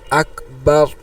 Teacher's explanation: শেষের হা শব্দটা উচ্চারণ হবে কিন্তু হা এর কোন হরকত উচ্চারণ হবে না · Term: হরকাতের উপর অকফ